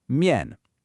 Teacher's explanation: mian is a neutral tone. This means it's unstressed, it's quick, it's light, no emphasis.